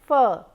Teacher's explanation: You can also say sounds like f, where you are using the lower lip and the teeth to block the air, and then you release sounds like f